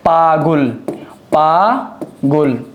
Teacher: আমি আরেকবার বলতেছি, পাগল শব্দের মাঝখানে যে গ আছে ব্যঞ্জনে যুক্ত, সেখানে একটা অ থাকার কারণে পূর্ববর্তী আয়ের ফলে মাঝখানের অ এর উচ্চারণ ও এর মতো হবে। যেমন পাগুল, পাগুল, সেটার উচ্চারণ হবে কি পাগুল। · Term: উকারান্ত